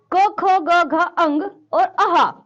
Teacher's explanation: यह सभी वर्ण कंठ से निकलते हैं